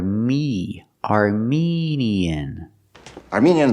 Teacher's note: do not pronounce the word Armenian the word is pronounced Armenian we use the long e like green beans for the second syllable